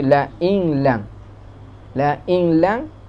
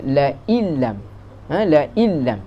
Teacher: La inlam, in tu tak bunyi sikit dah nun. Kalau nak ditulis sebutannya seolah-olah nun tak ada. · Idgham memasukkan nun ke dalam huruf lam. Ni idgham yang kamil, idgham yang sempurna. Tak bunyi terus nun.